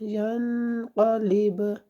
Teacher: یا نون زبر ین، قاف زبر قا، ین قا، لام زیلی، زیر کی آواز نیچے سے ادا کرنے، لام زیلی، ین قالی، با پیش بو، ین قالیبو، آگے وقف، ین قالیب، با میں وقف کرتے ہوئے اپنے قلقلہ کرنا ہے